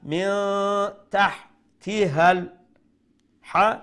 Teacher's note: Make sure you pronounce the ha from the middle of the throat.